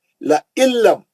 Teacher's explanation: نون ساکن کا ادغام بلا غنہ، نون غائب ہو گیا